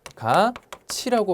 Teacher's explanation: 티귿이 이를 만나 치읒으로 변했습니다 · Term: 국외음화